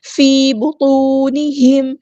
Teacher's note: میم ساکن پر اظہار شفوی ہو رہا ہے، ٹائم نہیں دینا